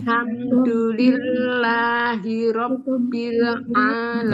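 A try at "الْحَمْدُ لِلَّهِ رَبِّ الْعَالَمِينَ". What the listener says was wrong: Nah, jangan di e kan. Rabbil alamin.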